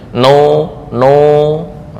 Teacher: Nun sukun atau mim dalam keadaan ringan tapi tetap memiliki ghunah. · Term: mutaharrik mukhafaf